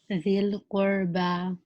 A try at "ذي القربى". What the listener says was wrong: Make the ra heavier.